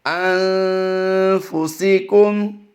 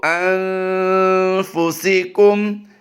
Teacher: اس وقت آپ اپنی اسکرین پر جو لفظ دیکھ رہے ہیں أَنفُسِكُمْ، یعنی ہم نے اس میں صرف نون ساکن کے بعد فا آنے کی وجہ سے حروف اخفا میں سے فا آیا ہے، ہم نے غنہ کیا ہے، اور غنہ بھی زمانی کیا ہے، اور لمبا کسی کو نہیں کیا ہم نے۔